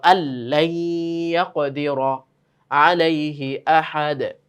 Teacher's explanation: নুন সাকিনের পরে লাম, ইদগামে বেলা গুন্না, যেখানে কোনো গুন্না নেই কিন্তু ধরে ফেলবে